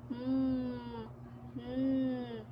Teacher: dahil sa pagbaba ng velom ay hindi sa bibig kundi sa ilong lumalabas